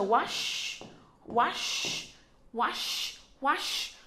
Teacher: Chúng ta có shh, cong lưỡi lên nha.